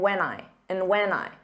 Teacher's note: and when just becomes an unstressed when when when so you just don't open your mouth as much